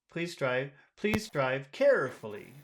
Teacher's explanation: uhhuh okay now if you wanted to sound friendlier you could you could put a high tone on care and say carefully please drive please drive carefully so that would sound friendlier or